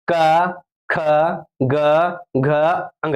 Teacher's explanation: क ख जो है कहां से बोलते हैं हम लोग कंठ से बोलते हैं · देखिए जब बोलिएगा क ख तो आपका जो कंठ है ना वहां पर रगड़ होगा।